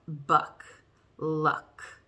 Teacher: uh is down low in your mouth uh middle low your tongue's like middle low and not in the front not in the back